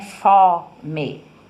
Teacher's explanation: Veja como fó é uma sílaba aberta, o O é aberto